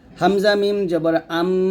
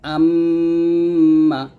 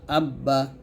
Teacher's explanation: চারটা আমরা দুই ঠোঁট থেকে উচ্চারণ করব